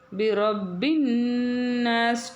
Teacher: பாவுல ஷத் இருக்குது அழுத்தம் கொடுக்கணும்